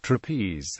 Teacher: the English word trapeze is an example of an iambic pair of syllables since the word is made up of two syllables and is pronounced with the stress on the second syllable